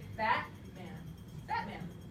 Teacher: your tongue never comes up and hits the alveolar ridge there's no in there you spell it with a t because · it sounds like this stop the air flowing it's a stop it's a glottal stop you stop the air at your glottis and don't let any air through just for a split second